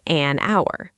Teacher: The H in hour is completely silent, so the word really starts with the vowel sound ow.